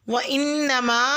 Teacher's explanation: وانما میں نون مشدد پر غنہ کریں اور ما کی مد کو 3 سے 4 الف کے برابر لمبا کھینچیں